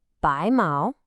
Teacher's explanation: that's a rising tone, then a high-level tone